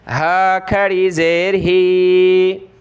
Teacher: ایک الف کی لمٹ میں اس کو نیچے کھینچیں گے کھڑی زیر کی وجہ سے